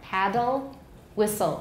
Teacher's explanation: be syllabic because there's no intervening vowel no schwa there but in my speech they are not syllabic because there's a vowel there